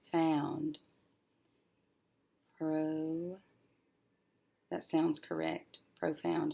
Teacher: I have this diphthong that says ow, so the second syllable will be found